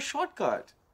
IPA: ˈʃɔrtˌkʌt